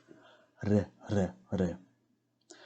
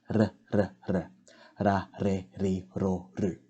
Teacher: It is basically a soft rolled R sound